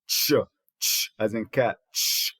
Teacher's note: So the ch is a voiceless voiceless post alveolar or voiceless palatal affricate